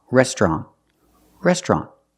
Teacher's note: the second syllable is an open Sound ah